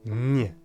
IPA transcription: ɲ